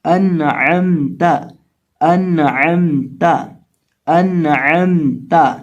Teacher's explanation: اظہار کا معنی ہوتا ہے نون کی آواز کو ظاہر کر کے پڑھیں گے، اور عین ہے، عین کو حلق کے درمیان سے ادا کریں گے، اور یہ میم ساکن کے ساتھ مل رہا ہے، اور تا کے اوپر یہاں زبر پڑی جائے گی، تو اس کو پڑھیں گے انعمت انعمت انعمت۔